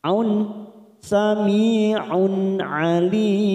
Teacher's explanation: Sami kasrah bertemu ya sukun 2 harakat. Aun dhamma tanwin bertemu ain. Kita baca jelas tanpa mendengung bacaan idhar halqi.